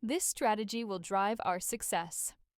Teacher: notice the falling intonation that's executive Authority in action